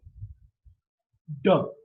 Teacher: D is a voiced sound because the vocal cords are held loosely together, and when the air passes through, there's a lot of vibration.